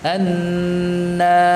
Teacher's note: Nunnya tetap dibaca dengan tipis. Tidak terpengaruh dengan tebalnya ra ini